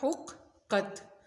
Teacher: یہ دھیان رکھنا ہے کہ شد والا حرف ہمیشہ 2 مرتبہ پڑھا جاتا ہے۔ ہا کی آواز حلق سے نکلے گی، قاف کی بھی آواز موٹی ہوگی، حلق سے نکلے گی۔